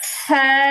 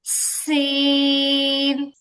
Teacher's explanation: সা হচ্ছে একদমই পাতলা একটা হরফ, আর এই সমজাতীয় হরফটাই যদি একদম শক্ত করে বলা হয় তাহলে হবে সিন।